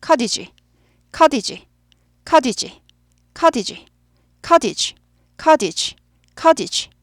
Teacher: 근데 커티지 하지 않고 t가 약화돼요